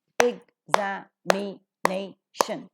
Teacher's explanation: So, stress is to be given according to the rule for the nurse sound, because the syllable before the suffix is accented with the word for the words ending with tion. But because the word is quite bigger, a secondary stress is also given to the syllable za.